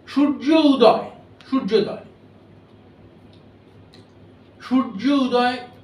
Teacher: তেমনি সূর্য উদয়, সূর্যোদয়, সূর্য উদয়, সূর্য মানে ও উচ্চারণ করবেন না, অ। সূর্য উদয়, এইটা বলতে গেলে ওই উটা আর পুরোপুরি উ হয় না।